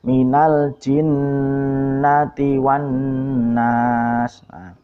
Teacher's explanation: di sini ada hukum bacaan ghunnah jinnati ditahan dulu